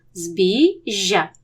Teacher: дві букви ж Але вони позначають один звук пом'якшений подовжений ж